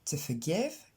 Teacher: on trouve le son E pour le OR. Vous l'accentuez surtout pas